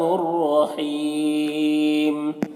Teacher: یہاں پر الف لام حروف شمسی را کے شروع میں ہے تو الف لام دونوں کو نہیں پڑھیں گے۔ رائے مشددہ کے اوپر زبر ہے تو را کو پر پڑھیں گے۔ یہاں پر وقف کی صورت میں مد عارض وقفی ہوگا تو اس طرح سے پڑھیں گے۔